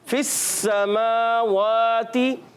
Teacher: 2 मरतबा पढ़ा जाता है, पहले अपने से पहले वाले मुतारिक हर्फ से मिलकर, और दूसरी मरतबा अपनी हरकत के मुताबिक पढ़ते हैं, और फिर ये अदा होता है फिस समावाती। सीन को सीटी के साथ अदा करेंगे, हुरूफ असलिया में से, मखरज के लिहाज से और सिफत के लिहाज से हुरूफ सफीरिया में से।